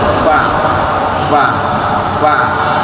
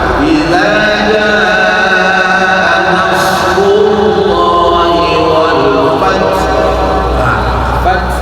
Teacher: Huruf fa berangin, ta berangin, ha berangin. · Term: hamas